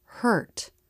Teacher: Watch the tongue pull back and up. Before coming forward for the T. In a stressed syllable, the vowel curves up, then down.